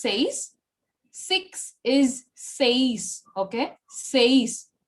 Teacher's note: The stress is on E, not on I. Because E is, takes over the I, because E is comparatively stronger than I.